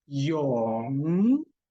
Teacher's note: using the root of your tongue to form a nasal sound